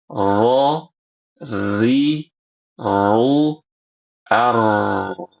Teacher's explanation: kita bisa merasakan getaran halus di ujung lidah ya. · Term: takrir